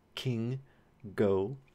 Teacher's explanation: K and g, as in king and go, these are your velar stops. So you have airflow being held right behind the velum, and then it's released. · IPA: [k]